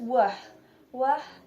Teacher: wah, place of articulation bilabial, manner of articulation approximant, and wah includes two voiced.